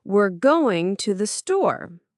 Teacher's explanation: Stress going and store.